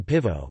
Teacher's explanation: long falling as in pîvo ('beer') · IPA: /ˈpîːvo/